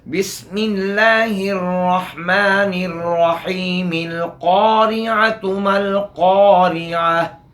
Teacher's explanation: तो बहरहाल इब्तिदा में साबित रहेगा। अगर बिस्मिल्लाह के साथ पढ़ें मिलाकर तो फिर ये हमज़ा नहीं पढ़ा जाएगा, लाम और क़ाफ पढ़ा जाएगा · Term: हमज़ा वस्ली